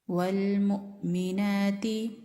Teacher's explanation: जब हमजा पर झटका देते हैं तो आवाज गले के नीचे वाले हिस्से से आती है।